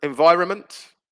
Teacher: the n before the m disappears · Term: silent letter